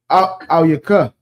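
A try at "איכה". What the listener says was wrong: Ayaka. Na'al. Ayaka. Yeah, Ayaka, yeah. It's like Ayaka. There's no la. Ayaka.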